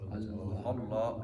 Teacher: اس کو تھوڑا موٹا کریں گے کیونکہ اللہ کے اس لام سے پہلے اگر زبر آ جائے تو اس کو موٹا پڑھتے ہیں